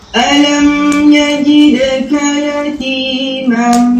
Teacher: Harful mim bagi sampai betul-betul ke bahagian rongga hidung tu